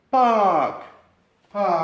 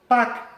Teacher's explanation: la r hace muda y lo que hacemos Es prolongar el sonido de la vocal de la a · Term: doble vocal